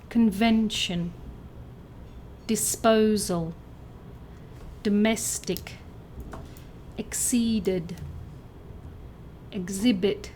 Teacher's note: Words that sound like 'Banana', with the stress on the second syllable